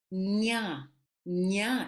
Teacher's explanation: It's a palatal N.